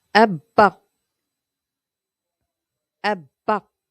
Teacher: Abba. the shadda on the ba means we say it twice. The first ba gets a sukun, which connects to the a and makes the syllable ab.